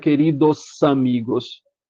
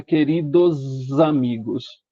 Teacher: um S entre duas vogais normalmente tem som de Z